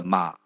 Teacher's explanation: 就是从2降到1的时候时间比较长一点，而1升到4呢是相对短一些的 · 第三声呢，是由2先降到1，再由1升到4，中间有个转折